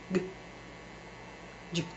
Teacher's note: They're both staccato and voiced.